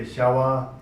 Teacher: we say shawa for deer, although we write as a pa, but we pronounce wa.